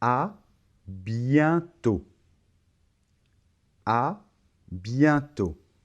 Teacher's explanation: on remarque encore une fois que la lettre t final ne se prononcent pas